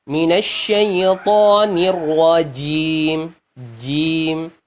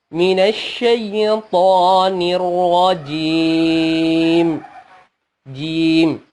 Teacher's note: Kalau kita berhenti tentunya menjadi mat arid lisukun, berarti di sini ada 3 pilihan, 2 atau 4 atau 6 harokat, dan mimnya disukunkan dan tidak boleh berdengun setelahnya